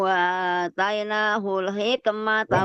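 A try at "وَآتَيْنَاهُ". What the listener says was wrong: Wa atai, jangan tai, wa atai.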